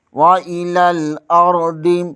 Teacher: واو کا مخرج ادا کرتے ہوئے ہونٹ گول ہونے چاہیے۔ حمزہ کے نیچے زیر ہے، اسے بغیر کھینچے بغیر جھٹکا دیے پڑھیں گے۔ لام زبر کو لام کے ساتھ ملائیں گے، حمزہ زبر کے آگے روئے ساکن ہے، یہاں را کو پر پڑھیں گے، دود کو بھی پر پڑھیں گے۔